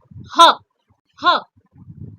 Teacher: When you will say h, you will feel a strong vibration in your glottal area.